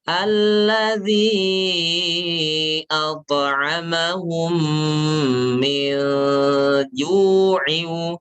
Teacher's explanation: Itu gunahnya tipis. Gunah yang ada di ikhfa itu tipis. Persiapan ketika kita membaca gunah, persiapan ingin mengucapkan huruf jim.